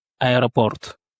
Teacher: Ici, l'accent tonique est sur la dernière syllabe